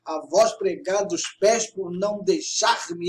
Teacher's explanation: sempre na sexta e na 10ª sílabas há uma força maior de entonação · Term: sílabas tônicas